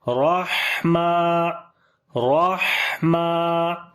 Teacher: ہا کو پھر گلے کے درمیان والے حصے سے پڑھیں گے اور سانس بھی جاری کریں گے۔ میم کو لمبا کریں گے، کھڑی زبر ہے، رحمہ رحمہ۔